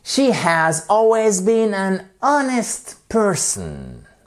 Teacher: Bon, j'exagère dans mon ton, mais c'est pour que vous fassiez bien attention au fait qu'on a le H qui ne se prononce pas ici